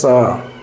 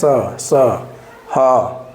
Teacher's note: गर्म हवा निकलती है और जीभ हमारी रगड़ खाती है जब बोलते हैं स रगड़ खा रही है स ह क्या रगड़ खा रही है। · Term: ऊष्म व्यंजन